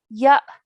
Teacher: joining the ya to the alif sakin we're going to produce a soft jerk sound